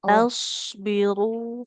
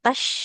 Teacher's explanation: makhrajnya tetap di ujung lidah ke ujung gigi